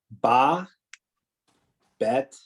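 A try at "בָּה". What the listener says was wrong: No, it's still ba because the vowel remember the hey is silent, so it's ba again.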